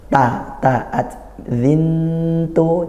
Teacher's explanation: makhrajnya antara bunyi Nun bunyi Nun dari tanwin kemudian ke Ta Ta di mana Di ujung lidah bertemu gigi seri atas · Di ujung lidah bertemu gusi gigi seri atas.